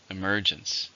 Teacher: How many syllables in emergence? 3, stress on the second.